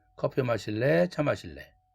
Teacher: 또 선택 의문문에서 or 앞에 올리고 마지막엔 떨어뜨리죠. 의문사가 없어도 or로 붙는 선택 의문문.